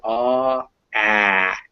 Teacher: your tongue is still low but you say it in the front of your mouth instead of the back so ah ah you can almost throw the sound forward but